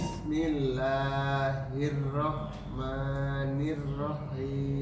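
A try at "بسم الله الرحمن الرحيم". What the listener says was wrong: Masih belum terlalu keluar desisnya.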